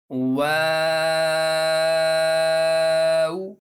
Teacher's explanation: تو ایک مرتبہ میں دہراتا ہوں، آپ توجہ کے ساتھ سنیے۔ واو، واو کو ادا کرتے ہوئے میں نے شروع میں ہونٹ گول کیے اور پھر نارمل کر لیے اور پھر آخر میں بھی ہونٹوں کو گول کیا